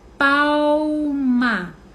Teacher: São 2 sons bilabiais, sequência, certo?